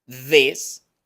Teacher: este sonido interdental para this con i corta y una s